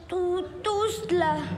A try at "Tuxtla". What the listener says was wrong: No lleva S, es Tuxtla con X.